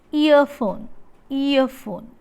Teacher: So the vowel is described as a glide from front unrounded vowel just above half close to central unrounded vowel between half close and half open